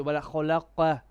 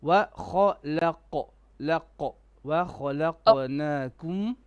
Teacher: Now your qaf, you did make it heavy, but when you bounced it, which you have to, you made the bouncing flat. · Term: qalqala